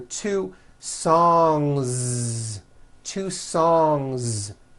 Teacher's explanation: Song ends with a voiced NG sound. So if you make it plural, don't forget to add a voiced Z ending.